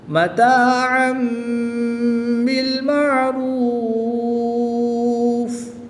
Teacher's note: 2 زبر کی تنوین کے بعد حرف با ہے تو یہاں پر اقلاب ہوگا، 2 زبر کی تنوین کو میم سے بدل کر غنہ زمانی کر کے پڑھیں گے